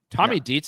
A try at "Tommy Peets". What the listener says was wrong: Tommy Peets. You said Dietz right there. Because it's a massive difference. Massive difference.